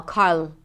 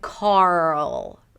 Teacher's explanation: That is the transition, just make sure that you're giving the R enough time so it doesn't move automatically to the L